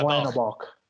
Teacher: the CH in German is kind of its own sound. Like it's not a K sound, it's not an S sound. It's like something in between.